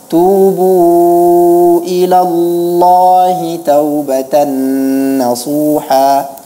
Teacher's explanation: Allah itu diucapkan dengan tafkhim, tapi tidak perlu seperti hendak menelan lidah